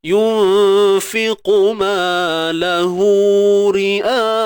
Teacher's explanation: Bacaan panjang yang berlaku ketika sambung je. Kalau berhenti tak jadi. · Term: mat silah